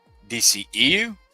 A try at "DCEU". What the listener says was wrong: You like you said E a little bit too fast. So I thought you said DCU.